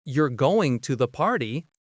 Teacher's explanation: with a falling tone, it's a statement